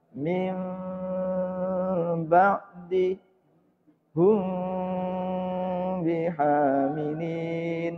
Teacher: Yang renggang, tidak renggang sampai mangap tidak. Hanya ada jarak antara bibir atas dan bibir bawah tidak sampai nempel rapet. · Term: iklab